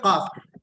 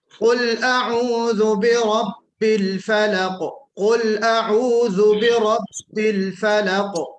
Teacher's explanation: قاف جو یہاں حلق میں جو آپ کا کوا بالکل لٹکتا ہے نا، وہاں سے آواز نکالیے قاف کی